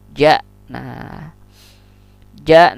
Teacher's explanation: ja ini sama makhrajnya dengan sya dan ya, tengah lidah berjauhan atau berlawanan atau bertentangan dengan langit-langit atas, ja. Nah ja.